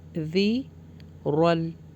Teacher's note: را کو ہیوی کر کے پڑھنا ہے اور ذال کا مخرج بھی سافٹ نکالنا ہے